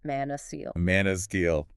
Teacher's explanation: the V sound in of is another one that often gets elided before a consonant. So man of steel, becomes man of steel.